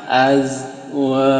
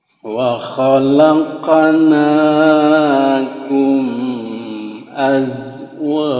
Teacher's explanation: Nah, ini asalnya jan ya. Berhubung kita waqaf, itu kita jadi tanwinnya jadi hilang, tadinya an jadi a, jan jadi ja.